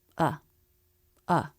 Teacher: lower and flatter in pitch and a little quieter and quicker